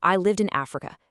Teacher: We naturally group words into these meaningful phrases and we take a tiny little pause between them. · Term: chunking